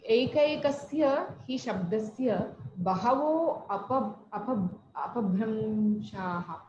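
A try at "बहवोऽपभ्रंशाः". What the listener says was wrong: Bahavo apabhramshaha, akara praslesha. Don't say bahavo. In between you should not pronounce a. What these people generally say? Bahavo apabhramshaha. Akara praslesha. So bahavaha apabhramshaha. If you split sandhi.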